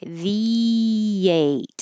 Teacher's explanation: between the 8, you're going to have a little Y